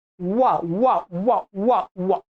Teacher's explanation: ब का केवल ओष्ठ होता है, व का स्थान होता है दंत और ओष्ठ, तो दंत्योष्ठ।